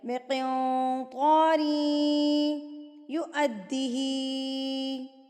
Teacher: دو زیر کو یا سے جب آپ ملائیں گے تو غنہ کے ساتھ ملائیں گے تو اس کو ہم کہیں گے ادغام مع الغنہ.